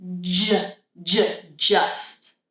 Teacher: So, for this sound, it's exactly the same as the last sound, the ch sound. But in this case, we need the voice to be on. So, I'm creating a vibration. I put my tongue up, stop the air, let it down, let the air out.